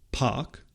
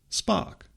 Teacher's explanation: In the word spark, for example, the per phoneme is realized without aspiration. That is, when we say park, there's a puff of air when the P is released, but when we say spark, there is no puff of air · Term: unaspirated p